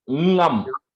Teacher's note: It's a combination of in and ga, but the ga is not a full ga. So it's ngum. It comes from the back of your throat.